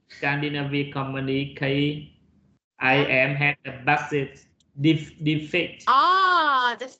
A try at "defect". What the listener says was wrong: Yeah, of course, because this is, you said defeat. Defeat is really different. And what is the relation with this word defeat here?